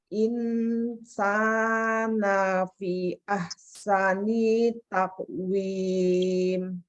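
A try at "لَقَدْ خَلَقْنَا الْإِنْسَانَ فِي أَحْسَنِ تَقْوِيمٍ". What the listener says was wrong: Insana fi-nya kurang sedikit lagi panjangnya. Ulangin.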